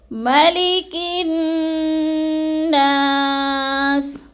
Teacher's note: کاف کو نون مشدد کے ساتھ ملا کر سختی اور جماؤ کے ساتھ غنّہ کر کے پڑھنا ہے ، جیسے مالک الناس، نا کو پھر تھوڑا سا کھینچنا ہے،